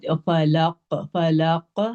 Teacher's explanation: بہت heavy strong قلقلہ ہے